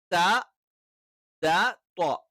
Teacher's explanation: നാവിന്റെ അറ്റം മേൽ മുൻപല്ലുകളുടെ മോണയോട് ചേരുന്ന ഭാഗത്ത് ടച്ച് ചെയ്തുകൊണ്ടാണ്